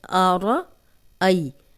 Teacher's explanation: را کو ہم موٹا پڑھیں گے کیونکہ را پہ زبر ہے، ای جزم والی یا، پیچھے حمزہ پہ زبر، تو بغیر کھینچے نرمی سے پڑھیں گے۔